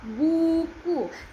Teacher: Lidah di belakang atas, bibir membulat.